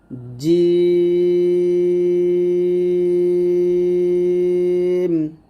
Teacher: জি জিম আমরা চার আলিফ টান দিব আর জিমের মাখরা ছিল জিহ্বার মধ্যখান তার বরাবর উপরে তালুর সঙ্গে লাগবে